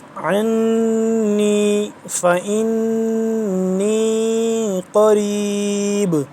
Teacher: اس پہ ہم غنہ کریں گے، نون ہے مشدد